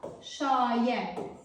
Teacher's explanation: Şayiə sözündə isə məsələ biraz fərqlidir. Burada şayiə həm A saitinin uzandığını, həm də I saitinin düşmə hadisəsini gördük.